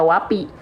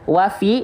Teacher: ya ya jadi sayaatkan baca Wapi karena P itu sifatnya jaher P itu sifatnya jaher enggak ada nafas keluar kalau Fa itu sifatnya hams keluar nafas mengalir nafas